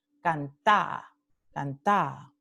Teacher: una vocal que se pronuncia por un tiempo más extendido. Cantá, cantá. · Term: una vocal más larga